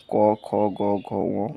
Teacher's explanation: প্রথম আগের দুইটি হলো অঘোষ আর পরের তিনটি হলো ঘোষ।